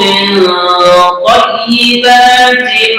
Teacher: jangan lupa mendengung, non nanti ketemu to. Ini nama bacaannya adalah ikhfa.